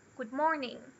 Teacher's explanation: Good morning é essa up and down, parecida de pergunta. E também a gente faz saudações assim com essa entonação em português.